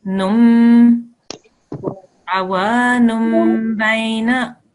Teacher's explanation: you would pronounce the meme instead of saying the noon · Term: miniature meme